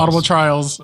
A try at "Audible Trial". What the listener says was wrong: There's no S.